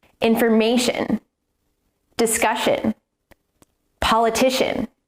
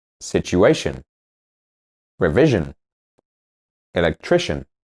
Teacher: the stress is always on the second to last syllable.